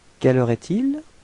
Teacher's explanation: as it's a question, it would be better to raise your voice at the end of the sentence, so it would sound like quelle heure est-il?